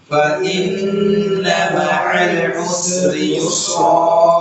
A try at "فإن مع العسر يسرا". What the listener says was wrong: Habiskan sinnya ya. فإن مع العسر يسرا Yang pertama sudah benar tipis, yang kedua tebal. فإن مع العسر, yang kedua yus juga, jangan usri yusro. Nah, ini tidak sama. Yang pertama sudah benar, tinggal yang kedua ya, tipiskan sinnya. Fa inna ma'al usri yusra.